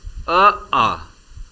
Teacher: स्वर अ, आ का उच्चारण कंठ से किया जाता है।